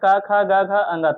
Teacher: क ख ग घ ङ तक उसको बोला जाएगा कंठ से